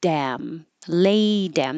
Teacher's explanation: that t changes to a d so that's where this kind of looks like Dam I and